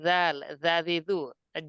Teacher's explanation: আমরা জাল পড়েছি, জিবার আগা দাঁতের আগা দিয়ে